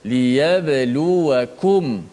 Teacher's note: Izharlah, zahirkan, jelaskan, nyatakan suara mim mati tu. Maknanya kita kena sebut, tutup mulut rapat-rapat pada makhraj mim. Liyabluwakum, dengan cara menutup mulut makhraj mim tadi tu biar kena betul-betul. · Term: izhar syafawi